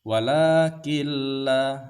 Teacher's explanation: tidak ada dengung tapi langsung saja kita masukkan atau tasdidkan ke huruf lam ini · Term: idgham bila ghunna